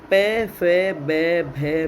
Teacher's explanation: प फ ब भ में ये व्यंजन है ओष्ठ्य व्यंजन, है ना। ओठ आपस में छूते हैं, इनका उच्चारण करते हैं तब।